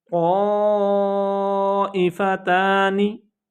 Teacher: क़ा के ऊपर मद है और इसको 3 से 5 अलिफ के बराबर लंबा करना है।